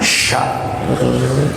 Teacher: Yang keluar itu dengan seluruh aliran udara yang ditekan dengan kuat. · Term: tafasyi